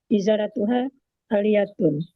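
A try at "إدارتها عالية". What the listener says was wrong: Tadi idaratuha, ya, bukan iza. Ida dal itu ya. Rotuha aliyatun.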